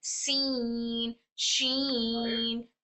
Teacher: back side हमारा टंग का ऊपर नहीं उठेगा हमारा मुंह फ्लैट होगा और इनकी आवाज लाइट अदा होगी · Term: सिफत इस्तफाल